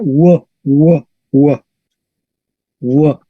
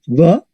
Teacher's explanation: la V en latín se pronuncia w, no v